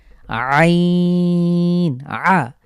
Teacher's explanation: আমি যখন এটা উচ্চারণ করব তখন আমার কণ্ঠের মাঝখানে চাপ পড়বে আইন। যেভাবে আমরা হা উচ্চারণ করেছি ঠিক একই জায়গা থেকেই আইন।